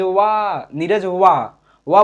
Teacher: दूर से बुलाएंगे और व को थोड़ा खींच कर बोलेंगे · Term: पुलत स्वर